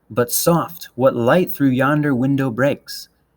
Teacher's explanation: basically ten syllables going back and forth between unstressed and stressed syllables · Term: pentameter